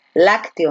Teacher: la fuerza de voz recae en la antepenúltima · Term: esdrújula